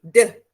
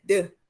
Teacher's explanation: Keadaannya cembung, melengkung, berfungsi sebagai daerah artikulasi, iaitu daerah penjemputan Gusi ni daerah artikulasi atau daerah penyebutan ni maksudnya contohnya deh, deh ni hujung lidah menjadi artikulator, dia menyentuh gusi